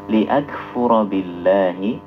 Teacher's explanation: Huruf kaf itu jangan dibaca mantul, tapi dihameskan, dikeluarkan saja udaranya.